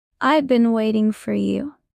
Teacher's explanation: I've been waiting for you often drops the have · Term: reductions